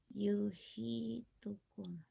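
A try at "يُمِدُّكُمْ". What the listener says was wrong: Yumi. Mim ya Bu ya. Mim ini. Kalau H 2 kali ke atas. Nah ya kalau ini sekali mim. Kalau 2 kali ke atas baru H.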